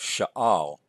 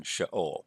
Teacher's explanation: because of the aleph, the gutturals prefer these A-class vowels. So we have sha'al rather than sha'ol.